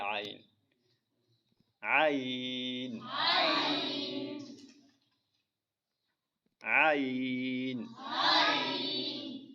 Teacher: عین کا مخرج حلق کے درمیان سے ہے۔